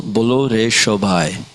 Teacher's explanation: in Bengali, the S is pronounced with a kind of an SH sound